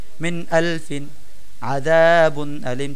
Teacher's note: তো আমরা এখানে গুন্না ছাড়া স্পষ্ট করে পড়বো